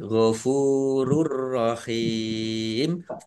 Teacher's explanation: Lam fathah berdiri mat tobi'i ghafurur rahim Pak domah wawu sukun juga mat tobi'i dibaca panjang dua harokat. Domah tanwin bertemu dengan huruf ro bacaan idgham bila gunnah masuk dengan tidak mendengung ya langsung masuk ke huruf ro ditandai ro-nya ada tasdidnya tapi tidak mendengung.